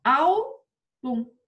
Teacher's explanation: Paroxítona. A sílaba forte é a penúltima.